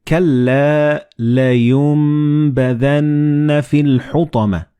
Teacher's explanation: Like in this example, you read كَلَّا لَيُنْبَذَنَّ فِي الْحُطَمَةِ. So the noon and ba, they will be assimilated together and you will pronounce them as meme